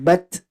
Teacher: Syiddahnya didahulukan daripada hamasnya. Jadi cukup percikan saja. Bat, hamasnya cukup percikan saja. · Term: huruf ta